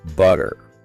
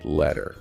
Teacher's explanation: the T sound, when it's between vowels, often softens into more of a D sound. Right, the flap T.